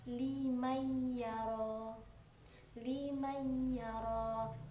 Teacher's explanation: harus dibaca dengan dengung sesuai dengan penjelasan idgham itu sendiri